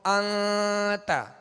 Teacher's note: تو انت یہ اخفا کا غنہ ہے، یعنی ناک میں آواز کو ہم نے چھپایا، ناک میں آواز کو ظاہر نہیں کیا